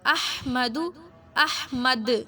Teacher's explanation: دال پہ کلکلا ہوگا